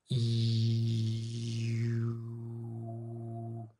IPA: i